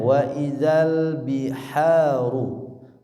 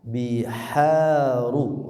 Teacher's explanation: wa idzal biharu, hanya ha kecil, biharu ru-nya tebal